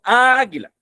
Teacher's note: Entonces, decimos chocan esas vocales, porque el sonido más fuerte se encuentra en la primera A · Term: sílaba más fuerte